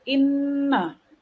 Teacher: inna, juga dibaca berdengung dikarenakan juga ada nun yang bertasydid. Lalu huruf na, inna, itu mad asli.